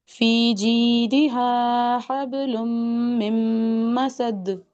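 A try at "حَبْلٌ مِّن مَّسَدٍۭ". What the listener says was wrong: हबुम में बार-बार कलकला ही नहीं हुआ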